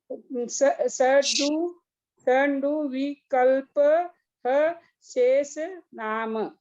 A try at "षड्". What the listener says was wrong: हाँ, वो षड है, षडु नहीं, षड, नहीं, हाँ, डू नहीं है, वो ड है, षड। ऊ की मात्रा है आपके?